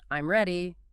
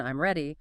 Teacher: If you say it with a falling tone, I'm ready, it's a statement. But if you say it with a rising tone, I'm ready, whew, it becomes a question, even though the words are identical. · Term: intonation